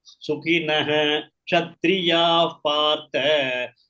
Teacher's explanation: When Ksha comes, the Visarga in front of it should be pronounced fully.